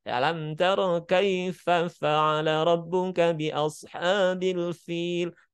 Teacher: ada desisan udara yang terdengar bukan sekedar mengalir tapi terdengar